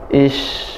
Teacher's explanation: Ish, nafasnya shin mengalir.